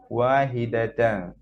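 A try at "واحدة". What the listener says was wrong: ওয়াহিদা, হ্যাঁ, ওয়াহিদা না কিন্তু ওয়াহিদ। ওয়াহিদ, হ্যাঁ,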